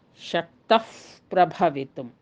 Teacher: ಪ್ರಾಯಶಃ ಅಫ್ ಎನ್ನುವಂತಹ ಶಬ್ದವನ್ನು ನಾವು ಅಲ್ಲಿ ಕೇಳುತ್ತೇವೆ. ಉದಾಹರಣೆಗೆ 1ನೆಯ ಶ್ಲೋಕದಲ್ಲಿಯೇ, ಸೌಂದರ್ಯ ಲಹರಿಯ 1ನೆಯ ಶ್ಲೋಕದಲ್ಲಿಯೇ ಶಕ್ತಃ ಪ್ರಭವಿತುಂ ಎನ್ನುವಂತಹ ಪದಗಳಲ್ಲಿ ಸಂಧಿಯ ನಿಯಮವನ್ನು ಅಳವಡಿಸಿದಾಗ ಶಕ್ತಃ ಪ್ರಭವಿತುಂ. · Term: ಉಪಧ್ಮಾನೀಯ